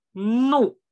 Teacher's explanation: 这里有个鼻音，你看这个怒就是鼻音的怒啊